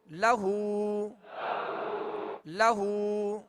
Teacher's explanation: لام پر زبر ہے، آواز اور منہ کھول کر ادا کریں گے مگر کھینچیں گے نہیں۔ اور آگے ہا پر الٹا پیش ہے، جسے جو واو مدہ کے قائم مقام ہے، ایک الف کی مقدار میں اسے کھینچ کر ادا کریں گے۔